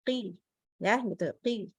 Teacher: Qaf itu adalah huruf yang pangkal lidahnya naik tetapi dia infitah.